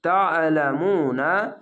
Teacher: তা আইনটিকে মোটা করে গলা চিপে পড়বেন